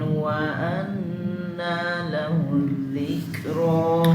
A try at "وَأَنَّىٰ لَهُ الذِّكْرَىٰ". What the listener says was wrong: हमजा की तहकीक कम हो रही है वअन्ना वअन्ना